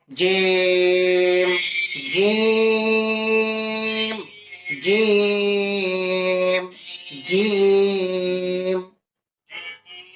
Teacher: জিহ্বা বাঁকা হয়ে উপরে তালুর সঙ্গে লাগবে জিহ্বা এই যে তালু আর এটা জিহ্বা জিহ্বা এরকম তালুর সঙ্গে